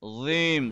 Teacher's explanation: dha is a heavy letter. Remember, tip of the tongue touching backside of the upper tooth.